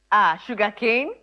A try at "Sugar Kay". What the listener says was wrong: No, not Cane. Come on, K-A-Y. Sugarkay.